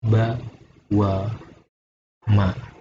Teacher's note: Keluaran huruf ini berasal dari pertemuan antara bibir atas dan bibir bawah. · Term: dua bibirnya